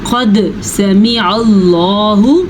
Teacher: قد سمع اللہ، قاف زبر دال، قد، قاف موٹا ہے اور دال پہ کلکلا ہو رہا ہے